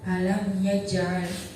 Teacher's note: Di situ ada huruf qalqalah yaitu jim yang matinya asli di tengah kalimat, maka cara bacanya memantulkan huruf qalqalah tersebut.